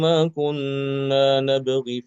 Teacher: dibaca pendek ya karena imam hafaz tidak menetapkan adanya ya zawaid